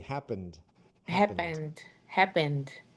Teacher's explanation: it's not a T, it's a D